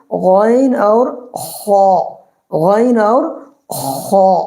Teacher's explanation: حلقے کا جو اخیر والا حصہ ہے اس سے نکلے گا غین اور خا